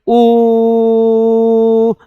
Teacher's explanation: आप चाहे जितना भी लंबा बोलेंगे हमारे मुंह से सिर्फ एक ही ध्वनि आएगी। एक जैसी ध्वनि आएगी और जहां कहीं भी एक जैसी ही ध्वनि आएगी वो स्वतंत्र है। · शुरू से लेके एंड तक हम एक ही ध्वनि का उच्चारण कर रहे हैं, वो है ओ। और आगे जानेंगे ओ, आप चाहे जितना भी लंबा बोलेंगे हमारे मुंह से सिर्फ एक ही ध्वनि आएगी, एक जैसी ध्वनि आएगी। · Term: स्वर